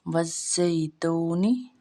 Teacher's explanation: واو مدہ کو ہم نے 1 الف جتنا لمبا کرنا ہے، یا لین کو ہم نے لمبا نہیں کرنا۔